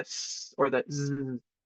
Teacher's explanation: sometimes I like to refer to these as like a hissing noise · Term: windy sounds